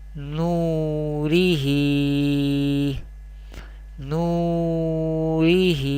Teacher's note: same vertical harakat khadi zir we pronounce by stretching up to one alif or two harakat